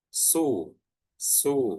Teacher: Jadi, U-nya itu terdengar sempurna, enggak ada tercampur dengan huruf O-nya. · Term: dhammah